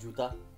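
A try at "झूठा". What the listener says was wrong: It's not juta, it's chuta. Chuta. No, juta is shoe and juta is lie. So there's a difference.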